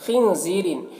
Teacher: خا کو پر پڑھیں گے، یہ حروف مستعلیہ میں سے ہے اور نون میں اخفا ہوگا، نون کی آواز کو ناک میں چھپا کر پڑھیں گے۔ · نون میں اخفا ہوگا، نون کی آواز کو ناک میں چھپا کر پڑھیں گے۔ زی میں یا مدہ ہے، 1 الف کے برابر کھینچیں گے۔